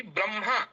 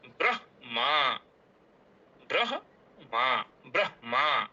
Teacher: अब कभी-कभी ब्रह्मा ऐसा बोल देते हैं। ब्रह्मा पहले म का उच्चारण करते हैं। फिर ह का उच्चारण करते हैं। लेकिन ऐसा करना अशुद्ध है।